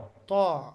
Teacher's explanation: জিহবাটা উপরের দাঁতের গোড়াতে লেগে উচ্চারিত হয়